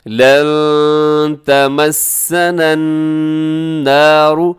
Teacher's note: نون ساکن کے بعد تا ہے، تو یہاں پر اخفا ہو رہا ہے، آپ نے اخفا کرنا ہے، آواز کو ناک میں چھپانا ہے